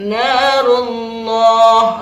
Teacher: ada lafaz Allah dibaca tebal karena diawali dengan dhammah atau fathah, disebut tafkhim